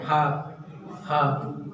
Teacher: जब हा बोलेंगे तो आप देखेंगे कि ये जो ध्वनि निकल रही वो कंठ से निकल रही